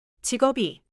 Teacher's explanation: I can feel my lips close for the 비읍 sound, then release into 이.